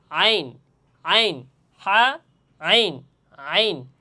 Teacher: এই আইন হরফটিও গলার মধ্যখান বা ওস্তে হল থেকে এ আইন হরফটি উচ্চারণ হবে